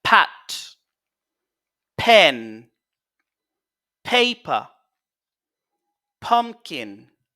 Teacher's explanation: Donc c'est une consonne sourde plosive.